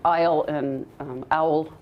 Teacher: aisle and owl, for example, can sound the same